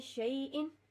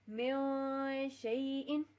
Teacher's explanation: For example شئی کے ساتھ، یعنی یہاں پہ شین آ رہا ہے، ہم اس کو پڑھیں گے شیئن. جو میوں ساؤنڈ ہے اس کو تقریباً 1 الف جتنا رکھنا ہے، یعنی آلموسٹ 1 الف جتنی لینتھ ہو، تاکہ پتہ چلے کہ اخفا کیا ہے.